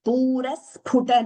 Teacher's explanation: note the Dvitvam there. The S is doubling. Sphuta Pa Mahaprana.